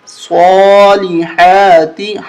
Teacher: حا کو حلق سے نکالیں گے